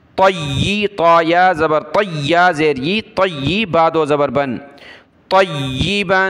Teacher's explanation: با کے اوپر دو زبر تنوین کلرفل ہے، ناک میں آواز پیدا کریں گے